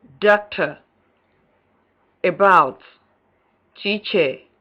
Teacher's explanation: central, half closed, lax, and unrounded, as in doctor, about, teacher